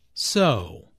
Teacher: Notice how the o sound is drawn out here, combined with the intonation which shows boredom.